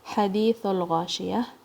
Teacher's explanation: हा की आवाज हलक के दरमियान से आएगी और अपने थोड़ी वोकल कोड को अपने स्कवीज करना है · ہا کی آواز حلق کے درمیان سے آئے گی اور اپنے تھوڑی ووکل کارڈز کو اپنے سکویز کرنا ہے اس ساؤنڈ کے لیے، اور ایکسہیلنگ ساؤنڈ ہے اس کی.